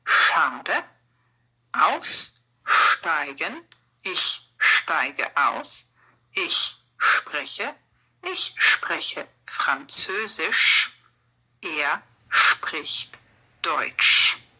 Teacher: So, these sounds, st, sp, sh, are all this sh sound.